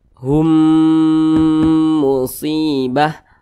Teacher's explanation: cara bacanya itu didengungkan. Nah, dengungnya itu 2 harokat atau kira-kira 2 ketukan